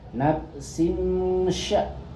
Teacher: nafsin sya ini mendengung kasrotai menghadap shin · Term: ikhfa